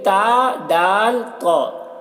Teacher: इन तीनों का मखर जबान की नोक और सामने के ऊपर के दांतों की जड़ है